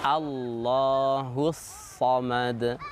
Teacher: Tetap dal dalam keadaan waqaf dibaca qalqalah, memantul bacaan huruf dal tanpa ada diakhiri dengan huruf hamzah.